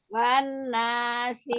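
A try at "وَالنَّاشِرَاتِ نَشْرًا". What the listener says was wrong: Lamain, gunahnya panjangin nun tasdid.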